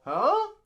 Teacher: at the end of the question, you go, huh? You go up. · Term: intonation